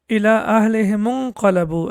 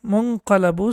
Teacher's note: the Hamza has been dropped. It is not pronounced.